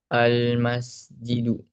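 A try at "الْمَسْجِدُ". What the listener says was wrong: Iya, al-masjidu. Kalau ada alif lamnya, tanwinnya tidak ada, betul.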